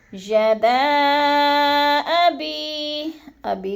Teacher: یدا پہ جو ہے مد منفصل ہے، حروف مدہ کے بعد حمزہ دوسرے کلمے میں آ گیا ہے، تو ادھر مد منفصل 4 الفی مد ہے، 4 حرکات کے برابر ہم نے اس کو کھینچنا ہے